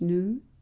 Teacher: in American English, the dropping of y sound is more common than British English. This phenomenon is called yod-dropping, since y sound is called yod in Hebrew.